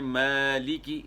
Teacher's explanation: یہاں کھینچیں گے مد کریں گے ایک الف کی مقدار کے برابر